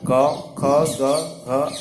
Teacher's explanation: कंठ से कवर्ग क, ख, ग, घ, अंग और अ, आ, ह विसर्ग का उच्चारण होता है